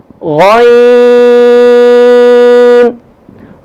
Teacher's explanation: غین کا حرف جو ہے وہ گلے کے شروع والے حصے سے ادا ہوگا. خا بھی اور غین بھی ایک ہی جگہ سے.